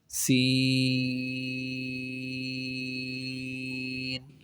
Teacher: سین کو سیٹی کے ساتھ پڑھیں گے اور لمبا کر کے پڑھیں گے کھینچ کر۔ زبان کی نوک جب اوپر اور نیچے کے اگلے دونوں دانتوں کے درمیان آ جائے تب یہ سین ادا ہوتا ہے، سیٹی کے ساتھ سین کو پڑھیں گے۔